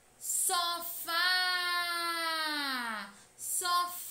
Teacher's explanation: na palavra sofá e ela é oxítona pois a última sílaba é tônica